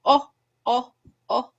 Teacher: oh is a closed mid-back tense rounded vowel.